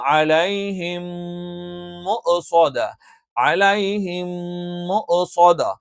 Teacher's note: സുക്കൂനുള്ള മീമിന് ശേഷം മീമ് വന്നാൽ നമ്മൾ പറഞ്ഞു ഇദ്ഗാമാണ്, അത് മണിച്ചുകൊണ്ട് ചേർത്തോതണം